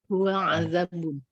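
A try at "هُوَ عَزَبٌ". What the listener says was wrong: Azabun ya, bukan azab pakai za tapi zai ya, azabun.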